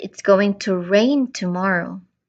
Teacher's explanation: I am focusing on the content word rain. I am stressing here the action.